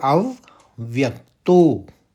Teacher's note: देखिए अव फिर व्यक आघात देते हुए अव व्यक तो और तो को ज्यादा खींचेंगे क्योंकि अवग्रह है